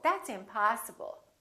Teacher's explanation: Particularly if it's a verb or a noun, we prolong the a in the stressed syllable